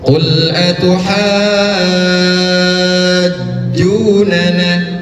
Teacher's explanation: Lihat huruf setelahnya huruf ja bertasydid maka dia panjangnya enam harakat karena mad lazim muttaqal kilmi qul atuhajunana enam harkat.